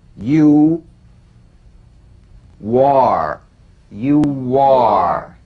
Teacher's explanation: Now the linking W. Linking words that end in the stretch vowel ooh.